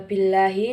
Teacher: Hai selanjutnya ada Billahi termasuk dalam lam tarqiq karena adalah file Allah yang didahului harakat kasrah cara membacanya ditipiskan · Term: lam tarkik